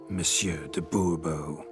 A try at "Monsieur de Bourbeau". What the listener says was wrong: The emphasis falls on the last syllable. Bourbeau?